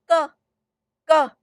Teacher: You block it at the velar region